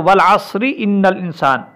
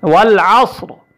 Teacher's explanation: عین صاد زبر عص رازر ری والعصری، اس را کو ملانے کی صورت میں اگلی آیت کے ساتھ ملانے کی صورت میں باریک پڑھا جائے گا، اور اگر ہم نے اس پر وقف کر دیا تو یہ را کیا ہو جائے گی، یہ موٹی پڑھی جائے گی، والعصر۔ اگر ہم نے اس کو اگلی آیت کے ساتھ ملایا تو والعصر ان الانسان، اس را کو پھر ہم باریک پڑھیں گے۔